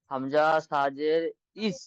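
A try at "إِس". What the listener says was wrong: হুম মাশাল্লাহ তারপর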